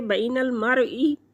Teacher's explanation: या साकिन से पहले लफ्ज़ पर ज़बर है तो यह लीन है, एक हरकत के बराबर खींच कर पढ़ेंगे